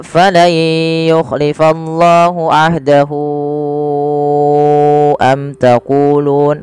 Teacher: Yaitu kita panjangkan sepanjang 4 harokat sebagaimana mad jaiz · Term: mad silah tawilah